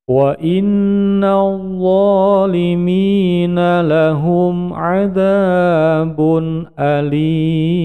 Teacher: Tanwinnya bacaan idhar halqi jelas dan pendek